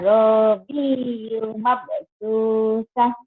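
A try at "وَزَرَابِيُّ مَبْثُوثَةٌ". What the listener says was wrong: Wazarabiyu mabsusah. Kolkolahnya keluarin.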